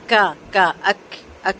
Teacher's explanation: کاف کو جو ہمارا تالو کا جو سخت والا حصہ ہے نا، ہڈی جہاں پر ہے وہاں سے ادا کریں گے، کا اک اک، ٹھیک ہے، اور 2 کاؤنٹس لمبا کریں گے۔